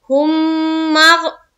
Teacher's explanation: میم میں مشدد کا غنہ کریں گے